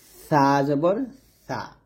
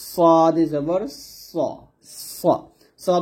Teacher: সা পাতলা হবে আর এটা হবে সদ জবর সদ মোটা